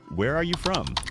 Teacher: Voice goes down at the end. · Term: falling intonation